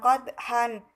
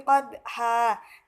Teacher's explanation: cara membacanya bukan qadhan tetapi qadha dan dipanjangkan selama 2 harokat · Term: mad iwad